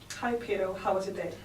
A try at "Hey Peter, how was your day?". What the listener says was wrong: So you need to say, "Hey Peter." You need it. You got to emphasize your R's. If you want to be American. Hey Peter. Hey Peter, how was your day? So ers are huge ones, okay? Big ones. You can't say Peter because you went like this. Peter. Peter. You got to say Peter.